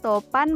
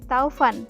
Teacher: Topan menjadi Taufan vokal o menjadi au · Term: diftongisasi